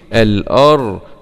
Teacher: راء سكون مع التفخيم الأرض ضم ضو ضاد ضم ضو الأرض الأرض الأرض وإذا الأرض